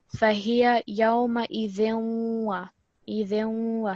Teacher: you want to pause a little bit and put extra emphasis because it's a shadda letter, but also it's going to have a slight ghunna, which is the slight nasal sound